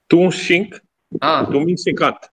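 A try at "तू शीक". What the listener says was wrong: Now this one, remember, shink for sneeze. Okay, but it's shik, S-I-K means study. Tu shik, you study. Tumi shikat, but this is tu shink, tumi shinkat. This distinction has to be made.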